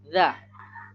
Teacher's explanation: Ujung lidah yang menyentuh ujung 2 gigi seri atas.